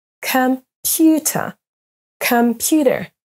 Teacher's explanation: Et les mots à l'écran maintenant sont accentués sur la deuxième syllabe.